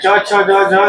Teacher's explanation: तालु का मतलब जीभ सीधा टच होगा दांत के बगल मसूड़े में।